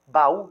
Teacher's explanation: é claro está acentuado que reforça mais essa tonicidade da palavra baú não é monossílaba baú não é um ditongo baú é um hiato